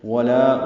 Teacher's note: واو ہونٹوں کی نا تمام گلائی سے ادا کریں گے. لا الف مدہ ہے، 2 حرکات لمبا ہے.